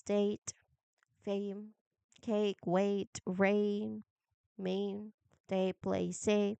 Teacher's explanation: You start with the sound in bed, but as you hold the sound, move your tongue toward your teeth, so your jaw will close just a little bit, and start the and end at the E sound. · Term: diphthong